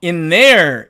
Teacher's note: 그러나 은과 이렇게 the가 만날 때는요, 이 the가 앞에 있는 은에 동화가 되어서 얘도 똑같이 은으로 발음이 됩니다.